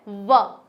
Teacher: व का उच्चारण करते हैं तो हमारे जो दांत है वो होठों पर रखे जाते हैं और फिर ध्वनि निकाली जाती है व। बाहर की तरफ एक वायु का प्रवाह होता है और व का उच्चारण होता है। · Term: दंतोष्ठ